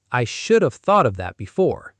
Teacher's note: The word have shrinks to just a soft v. The stress stays on could, should, would. The v is almost whispered.